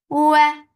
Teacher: For makhraj of waw circling your lips, fatha open your jaws, the sound is short.